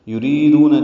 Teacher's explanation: یریدون ری یا مدہ ہے، را باریک ہے، دو واو مدہ ہے، تو حرکات لمبا ہے۔